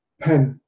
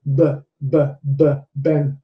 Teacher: a puff of air from the mouth moving the paper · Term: aspiration